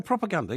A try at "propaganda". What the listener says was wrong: The emphasis is on the ander. It's not propaganda.